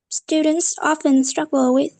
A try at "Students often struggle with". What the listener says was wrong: That's not my intonation though. That sounded so robotic.